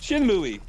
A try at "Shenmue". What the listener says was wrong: it's actually Shenmue. The E's pronounced different.